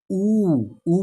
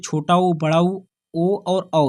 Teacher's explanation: ऊ बोलेंगे आप तो आपका ओंठ जो है गोलाकार हो जाएगा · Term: व्रतमुखी स्वर